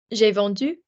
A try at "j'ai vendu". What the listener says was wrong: So what nice accent. So nice accent.